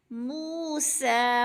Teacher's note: وَإِذِ اسْتَسْقَىٰ مُوسَىٰ، موسیٰ، منہ پہ وہ مدہ ہو رہا ہے، دو حرکات ایک الف کے برابر کھینچ کر پڑھنا ہے، وہ ساکن سے پہلے میم کے اوپر پیش ہے تو وہ مدہ مو یعنی کھینچ کر، موسیٰ، سین کو بھی کھینچ کر پڑھنا ہے، موسیٰ، کیونکہ کھڑی زبر الف مدہ کے قائم مقام ہوتی ہے، جتنا کہ الف مدہ کو کھینچنا ہے اتنا ہی کھڑی زبر کو کھینچنا ہے۔